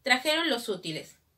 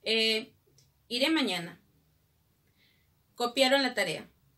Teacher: el tono descendente se asocia a las oraciones enunciativas.